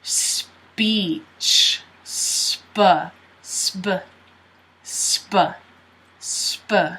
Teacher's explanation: the P actually sounds more like a B than a P